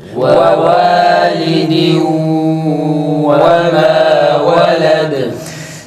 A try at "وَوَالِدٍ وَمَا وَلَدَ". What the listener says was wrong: Vav'da gunne yapalım yalnız. Gunne sadece idgam yapmakla yetinmeyelim. Mesela ve validi bu şekilde sıkmayalım. Vav'a bağladığımız gibi tenvini gunne yapıyoruz. Burundan ses getirerek okuyoruz.